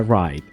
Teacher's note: En estos casos, en lugar de pronunciar la W, nos enfocamos en articular claramente la R y omitir el sonido de la W